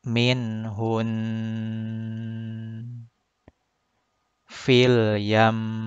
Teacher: dengung atau gunnahnya harus mengarah ke al-khayshum atau pangkal hidung.